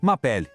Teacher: O resto, m'appelle, a gente junta tudo e soa como se fosse uma palavra só.